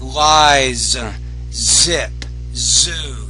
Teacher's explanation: Need to pronounce the Z with more vibration.